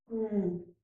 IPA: ŋ